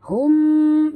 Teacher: mim mati bertemu mim, idgham mislain, tutup mulut, dengung 2 harakat